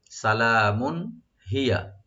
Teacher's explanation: মিমের উপর যে তানবিন আছে এখানে এজাহার হবে, গুণনা হবে না